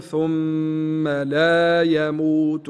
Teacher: الميم المشدده الغنه فيها لابد من غنتها · اللام هنا لام الف نمدها حركتين